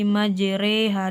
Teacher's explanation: dan juga antara dua lafaz di malah melafazkan imalah pada potongan meringankan atau mencondongkan suara bunyi harakat fathah